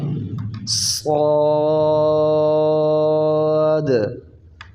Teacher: صاد، یہ صاد بھی 3 حرفی حرف ہے، اور یہ سیٹی والا حرف بھی ہے، اس کو پڑھتے وقت سیٹی کا آواز بھی نکلے، اور موٹا حرف ہے تو یہ موٹا بھی پڑھا جائے گا. صاد.